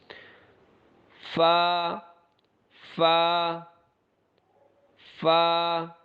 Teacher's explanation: فا کو ادا کرتے ہوئے تھوڑا سا ہمارے ہونٹوں سے ہوا باہر نکلے گی۔